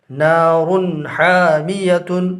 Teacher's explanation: 2 پیش تنوین میں سے ہے، اور تنوین کے بعد حروف حلقی میں سے ہا ہے، لہٰذا تنوین کا اظہار ہوگا